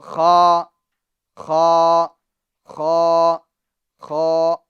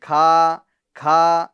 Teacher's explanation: اس کا مخرج آپ پیچھے دیکھ لیجئے، اس کا مخرج ہے حلق کے اوپر والے حصے سے ادا ہوتا ہے، یعنی آخری حلق، آخری حلق سے ادا ہوتا ہے